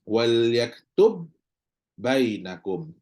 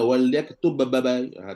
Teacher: Tak ada dah qalqalah pada ba ni, tak ada dah. · Maka terus ba pertama hilang dah masuk. Maka yang kita baca hanyalah huruf kedua sahaja. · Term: idgham